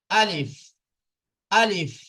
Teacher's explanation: আলিফ মুখের খালি অংশ হইতে উচ্চারিত হয়